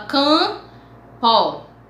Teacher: nós temos duas aparentemente duas consoantes mas como vocês sabem a pronúncia é um nasal vamos lá campo você não fala o mp você fala campo